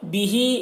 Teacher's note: یہاں پر ہا میں کھڑا زیر ہے، یہ یا مدہ کی طرح ہوتا ہے، اسے ایک الف کے برابر کھینچ کر پڑھیں گے